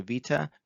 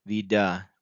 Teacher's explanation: a t to a d is a voicing of that consonant